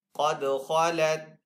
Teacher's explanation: دال کے اوپر یہاں پہ کلکلہ کریں گے۔ خا اور قاف دونوں حروف مستعلی میں سے اس لیے ان کو پر پڑھیں گے، دال حروف کلکلہ میں سے دال کے اوپر کلکلہ کریں گے۔